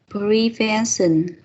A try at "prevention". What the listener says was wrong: Yep.